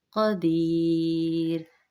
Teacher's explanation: مد عارض کریں گے، یعنی اس کو نسبتاً پہلے کی نسبت کھینچ کے پڑھیں گے